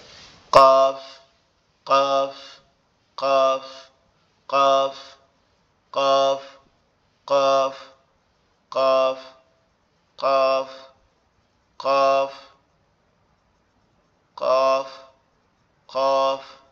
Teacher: কফ অক্ষটা যখন উচ্চারিত হবে তখন কন্ঠের মধ্যে কি হবে একটু ভাইব্রেট হবে একটু কম্পন হবে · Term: কলকলার হরফ